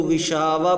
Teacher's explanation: اس کو اگر ہم وقف کریں گے تو غشاوہ پڑھیں گے